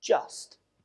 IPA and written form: dʒəst (just)